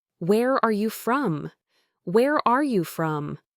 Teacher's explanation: In very casual settings, especially within the United States, you might hear speakers drop the word are